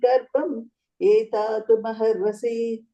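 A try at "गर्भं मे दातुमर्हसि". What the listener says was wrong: Ye is not there. Just say Garbham me. No ye.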